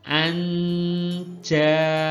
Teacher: cara membaca samar itu jadi huruf nunnya itu samar, kemudian kita sudah mengarah kepada huruf berikutnya, yaitu jim. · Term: ikhfa